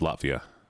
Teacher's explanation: Because of the consonant sounds, a harsh consonant sound like a T gets removed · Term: glottal stop